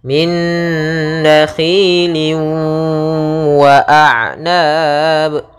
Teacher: cara membacanya yaitu tanwinnya masuk kepada huruf waw, kemudian ditahan gunnahnya. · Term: idgham bi gunnah